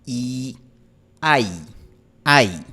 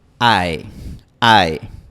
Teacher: Y como dije, la diferencia principal entre I en inglés y I en español es la posición final de la lengua. En español terminamos con la lengua en una posición más frontal y más arriba.